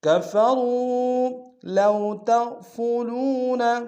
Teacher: لو میں واو لین ہے، بغیر کھینچے پڑھیں گے